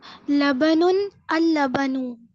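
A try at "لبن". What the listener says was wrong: Correct. Very good.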